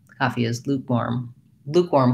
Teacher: in that case lukewarm i feel like i stressed a little bit more on the second syllable